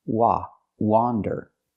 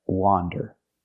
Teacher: Again, it has the open ah sound like hot and stop.